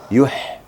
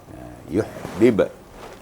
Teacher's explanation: H-nya di tenggorokan, bukan di dada. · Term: H tenggorokan